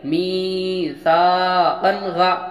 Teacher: اب یہاں پر جس حرف کے اوپر دو زبر ہو، اس حرف کے آگے الف لکھا جاتا ہے لیکن وہ پڑھا نہیں جاتا، اور دوسرا یہاں پر دو زبر کی تنوین کے بعد حروف حلقی کے 6 حرف میں سے غین آیا، جہاں ہم ظاہر کر کے بغیر غنہ کے جلد ادا کریں گے